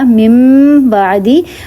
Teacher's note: اب میں نے مم جب کہا تو میرے دونوں ہونٹوں کو میں نے ملایا، مم بعدی، ناک میں بھی آواز گئی اور دونوں لپس جو ہیں وہ ملے آپس میں. ٹھیک ہے، اوپر اور نیچے والا لپ آپس میں ملا اور ناک میں آواز گئی. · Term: غنہ